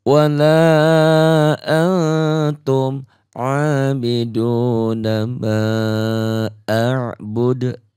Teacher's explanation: Jangan bu-nya kosar, dalnya menjadi qalqalah kubro.